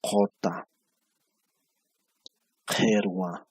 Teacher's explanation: La I se está pronunciando como si fuera E. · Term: vocales abiertas